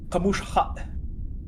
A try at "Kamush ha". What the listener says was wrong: Kamush. Yeah, it's close. the S sound is actually not a sh, it's a retroflex. tongue straight up. Kamush.